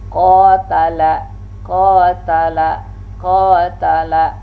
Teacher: qa ini jelas dia syiddah sifatnya, dan dia pun juga jelas al-isti'la dengan memainkan pangkal lidah diangkat ke langit-langit